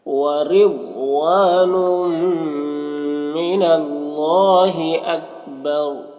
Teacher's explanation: یہاں پر وقف کریں گے تو را کا جو پیش ہے وہ سکون سے بدل جائے گا، تو پھر رائے ساکنہ سے پہلے با کے اوپر زبر ہے تو را کو پر پڑھیں گے اس طرح سے۔ وَرِضْوَانٌ مِّنَ اللَّهِ أَكْبَرُ۔ · یہاں پر الف مدہ ہے، ایک الف کے برابر کھینچیں گے۔ یہاں پر تنوین کے بعد میم ہے، حروف یومین میں سے تو تنوین کو میم سے مدغم کر کے غنہ کے ساتھ میں پڑھیں گے، اس کو ادغام ناقص کہتے ہیں۔